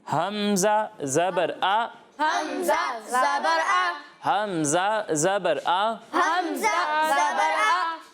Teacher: حمزہ کو حلق کے نیچے والے حصے سے ادا کرتے ہیں